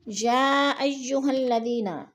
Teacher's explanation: یا پہ جو ہے مد متصل ہے، 4 الفی مد ہے، ہم نے اس کو 4 الف کے برابر کھینچ کر پڑھنا ہے